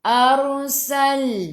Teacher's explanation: sebelum ra ada baris atas, ra-nya baca tebal tafkhim lidah naik ke atas.